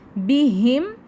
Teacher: میم ساکن کے بعد واو، اظہار شفوی کا قاعدہ، واضح کر کے پڑھیں